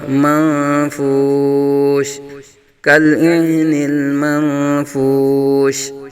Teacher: یہاں نون ساکن کے بعد حرف اخفاء میں سے فا آ رہا ہے، اخفاء کا قاعدہ یعنی غنہ ہوگا، منفوش، كالعهن المنفوش۔